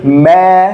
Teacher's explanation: fathah itu engak boleh lewat hidung